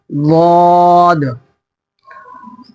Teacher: ضاد کو کہیں گے الٹی داڑھ میں لگا دیں گے زبان کے کنارے کو